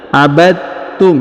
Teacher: dipantulkan tapi cukup langsung dileburkan ke huruf ta contohnya abadum ya Jadi huruf dalnya ini langsung menghilang melebur ke huruf ta ditahan dan ditekan